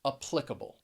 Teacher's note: you hear that in the third and the fourth syllable applicable if i say applicable you now hear the schwa in the first syllable as well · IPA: əˈplɪk ə- bəl